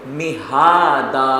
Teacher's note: مہادا میم کو نہیں کھینچیں گے ہا کو کھینچیں گے اور آخر میں وقف کریں گے مہادا جس کو وقف بالابدال کے نام سے آپ نے پڑھا ہے.